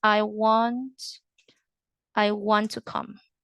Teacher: you don't pronounce the T twice when you read it